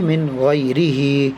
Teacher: نون ساکن کے بعد حروف حلقے کے 6 حرفوں میں سے غین آیا ہوا ہے, اس لیے بغیر غنہ کے